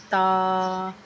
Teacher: سامنے والے دانتوں کی جڑ سے لگے تو تا ادا ہوتا ہے